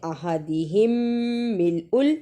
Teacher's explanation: احدہم ملء، ادغام شفوی، ادا کرنے کا طریقہ میم ساکن کو تھوڑی دیر منہ میں رکھنا ہے